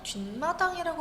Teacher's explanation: 미음, 니은 앞에서 니은 소리가 갑자기 덧난다는 거예요